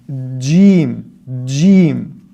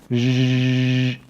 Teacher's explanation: the middle part of your tongue touches the hard palate and blocks the air completely, and then the release of that air is that sound